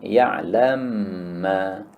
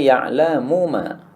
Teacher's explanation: Nah, ini dibaca idgham, ya'lam ma. Maka mim yang pertama ini disukun, kemudian diidghamkan kepada mim kedua, ya'lamma. Jadi asalnya ya'lamu ma, kemudian disukun menjadi ya'lamma, kemudian diidghamkan menjadi ya'lamma, idgham bi gunnah.